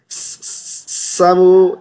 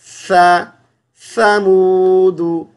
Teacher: सा को पढ़ने के लिए ज़ुबान की नोक बाहर निकालेंगे